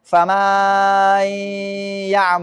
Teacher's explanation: sangat lambat sehingga memasukkan alif antara mim dan nun menjadi fama yaal.